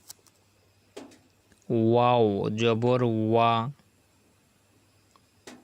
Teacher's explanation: ওয়া মুখ গোল হয়ে যাবে